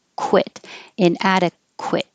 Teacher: the QU in the middle of a word or at the beginning of the word will sound like a KW. So you need to round your lips.